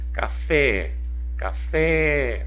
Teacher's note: Olha o fé é a sílaba tônica ela está aonde na última posição da palavra